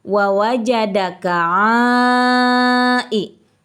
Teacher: Mad tabi'i menghadapi huruf hamzah dalam satu kalimat, maka ini adalah hukum bacaannya mad wajib muttasil. Panjangnya antara 4 sampai dengan 5 harokat. Tapi kalau sedang tadarusan boleh dibaca 2 sampai dengan 5 harokat.